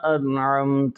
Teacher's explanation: نون پر اظہار حلقی ہے کہ نون ساکن کے بعد 6 حروف حلقی میں سے عین آ رہا ہے